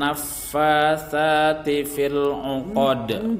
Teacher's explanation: Perhatikan huruf sa itu dibaca sa di ujung lidah dengan gigi atas.